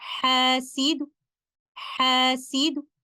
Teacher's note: since we are going to recite letter dal with a vowel, there will be no qalqala